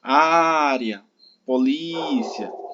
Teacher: essas palavras elas são paroxítona, a penúltima sílaba é a sílaba tônica